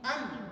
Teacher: Maknanya huruf mim, dia menggunakan 2 anggota. Dia guna bibir, dia guna al-khayshum.